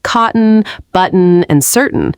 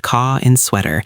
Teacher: cotton actually utilizes a glottal stop instead of a flap because the T is immediately followed by an N.